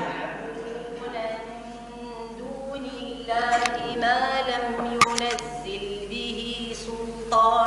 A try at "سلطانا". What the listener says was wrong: سل، ترقيق اللام، سلطانا.